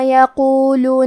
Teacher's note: کلمت یقولو میں حرف القاف ہے اور قاف کی ادائیگی زبان کے جڑ اور تالو کے نرم حصے سے ہے. قاف حروف تفخیم میں سے ہے تو ہم یہ حرف کو موٹی آواز میں پڑھیں گے، آخری میں لام کے پیش کو ظاہر کریں گے.